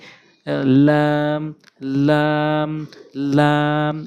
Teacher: জিহ্বার আগার কিনারাটা উপরে মারির সঙ্গে লাম, লাম, লাম।